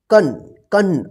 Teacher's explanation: इसका जो उच्चारण होता है ना, नाक से होता है और थोड़ा लंबा होता है, ठीक है ना। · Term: अनुस्वार